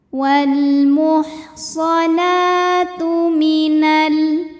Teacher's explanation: mad tabi'i muqaddar, karena huruf nun berbaris fathah panjang, maka cara bacanya dipanjangkan nunnya 2 harokat saja.